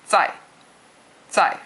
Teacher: fourth tone is, it sounds like you're yelling at somebody really short.